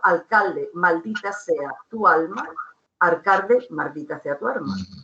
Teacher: vibrante que puede ser muy relajada